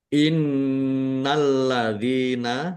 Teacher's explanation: nun tasdid bacaan gunnah dibaca mendengung, ditahan biar tampak mendengungnya.